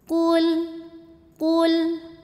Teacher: qafnya tebal, pangkal lidah angkat. Qu maju, lam gak boleh mantul.